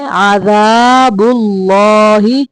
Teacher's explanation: اللہ کا لام موٹا پڑھنا ہے